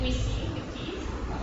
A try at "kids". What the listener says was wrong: Kids. Remember, it's an I, it's not an E. Kids.